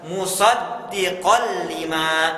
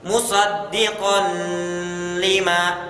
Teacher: Diidghamkan, dimasukkan ke huruf lam tetapi tanpa gunnah. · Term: idgham bila gunnah